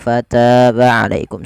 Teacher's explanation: Padahal fal ta di sini ada mad thabi'i yaitu bertemu dengan alif panjangnya dua harakat